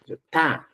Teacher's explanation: Y dice, mira, para producir este sonido, el ápice, la punta de la lengua, debe orientarse hacia la cara interna de los incisivos superiores, hacia la cara interna. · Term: fonema consonántico ta